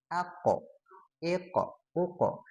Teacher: Padahal kaf dengan kof itu memang satu makhraj, tapi sifatnya berbeda, apalagi pas ketika dia disukunkan. Ya, kalau kof dia pas ketika disukunkan itu ada syiddah ya, dan ada qalqalah